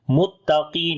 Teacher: کاف کو موٹا پڑھیں گے لیکن اب اس کی موٹائی تھوڑی کم ہو جائے گی کیونکہ اس کے نیچے زیر ہے. تو جب زبر اور پیش ہو تو موٹائی کا اور لیول ہوتا ہے اور زیر کے نیچے کم ہوتی ہے.